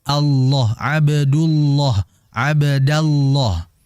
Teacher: lafzul jalalah Allah kalau ada sebelumnya huruf berharakat fath atau dommah maka dibaca loh, dibaca tebal